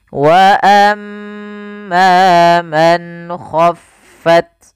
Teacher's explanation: Pada lafal nun sukun bertemu dengan huruf kha, ini ada bacaan izhar. Izhar artinya jelas. Apa yang dijelaskan di sini adalah suara nunnya. Man, tidak boleh man, tapi langsung saja.